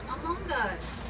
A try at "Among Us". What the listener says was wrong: Among Us? Among Us. Among Us. No, that sounds like a fungus.